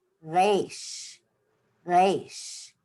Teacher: in Israel, they say Resh kind of with the back of their tongue. Resh, Resh, with the back of their tongue.